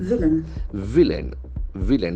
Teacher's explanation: The accent falls on the first syllable.